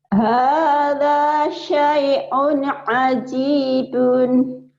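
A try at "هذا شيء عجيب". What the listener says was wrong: Ajibun, bukan hajidun.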